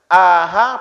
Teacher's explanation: Ada pangkal tenggorokan. Di sini keluar huruf hamzah dan ha.